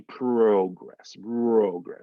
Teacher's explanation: the o is going to have like a u o to it like you're putting a u before the o